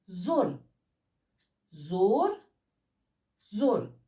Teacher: ये ओ का ह्रस्व रूप है, यानी इसे बोलने में ओ से कम समय लगता है